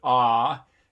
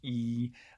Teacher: you have a lowering of the jaw to produce the low vowel for ah so your mouth is open more ah than it is for e